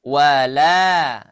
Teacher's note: lanya panjang lanya dua harakat